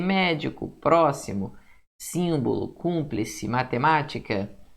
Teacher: Proparoxítona, a sílaba tônica é a antepenúltima ou a terceira de trás para frente